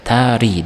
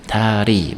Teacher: Ikkita unlini o'rtasida kelgani uchun bu l harfimiz pachimda l deb talaffuz qilinayotgan edi, lekin endi ikki unli o'rtasida kelgani uchun r ga aylandi.